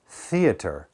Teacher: and unvoiced usage right so for example words like theater theater if I put my hand here and say theater there's no vibration it's just air passing through